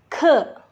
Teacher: Huruf K kita bacanya pakai angin, ke, keluar anginnya.